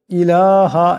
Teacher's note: লামকে এক আলিফ লম্বা করিয়া পড়তে হবে